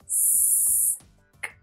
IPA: rɪsk